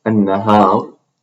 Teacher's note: the ra should not have excessive trilling in Arabic, by the way, excessive rolling of the tongue